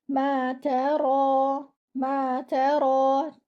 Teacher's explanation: Ta should be light. Your ra should be with 2 counts because it is with alif saghira.